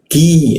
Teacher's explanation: Masa Q huruf Q di mana di siku tenggorokan lidahnya kita turunkan sehingga udara terbuka dan ada hembusan udara cukup kencang